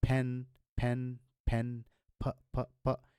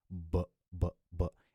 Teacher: You can touch your throat and you can feel that vibration going on. So P is a voiceless consonant, but when you convert it into a voice consonant, the sound becomes B.